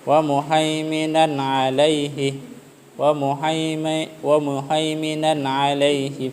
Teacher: Tanwin bertemu dengan ain ya. Maka bunyi n-nya itu jelas ya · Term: izhar